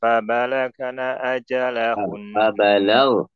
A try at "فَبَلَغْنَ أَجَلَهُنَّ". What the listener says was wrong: فبلغنا tidak boleh ada qalqalah. فبلغنا أجلهن.